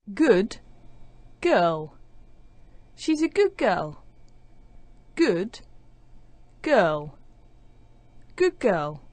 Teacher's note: like the sound at the beginning of the second word so the DU sound at the end of good is becoming like the G sound at the start of girl it doesn't actually disappear it actually sounds like a